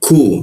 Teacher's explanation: ku ada hembusan udara karena lidahnya diturunkan